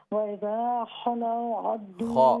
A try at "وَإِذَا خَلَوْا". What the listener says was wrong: खा को दुरुस्त करें। वइज़ा खलौ खा वइज़ा खलौ